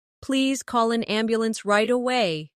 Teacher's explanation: Stress right away so the listener understands the urgency.